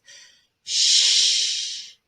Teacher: sh is a continuing sound, and the air continues to flow through your mouth. Shh. Your tongue is behind your top teeth, but there's enough room between the tongue and the roof of your mouth for air to flow through the whole time. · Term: fricative